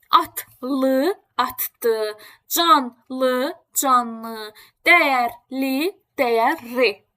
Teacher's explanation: l şəkilçisinə. Tələffüz oluna bilər d, tələffüz oluna bilər n və r formasında tələffüz oluna bilər.